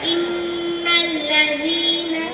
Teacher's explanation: நான் தான் நூன். என்னுடைய பிறப்பிடம் நுனிநாக்கு வாயின் மேல் பகுதியில் உருவாகிறேன்.